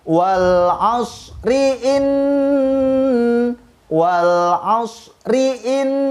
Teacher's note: Begitupun ketika kita mau menyambung ayat dari ayat 1 ke ayat 2, diwasol, disambung, maka bacaan ayat 1, ri-nya harus dibaca pendek